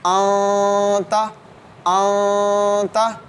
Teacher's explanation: اخفاء مع الغنہ کریں گے، یعنی ہم نون ساکن اور تنوین کی آواز کو ناک میں چھپائیں گے۔ نون ساکن اور تنوین کی آواز کو ناک میں چھپائیں گے اور زبان کے سرے اور نوک کو اوپر تالو کے ساتھ نہیں لگائیں گے